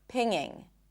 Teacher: It's not pinGinG, there is no G